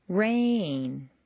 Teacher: Make rain very musical and put it on two notes.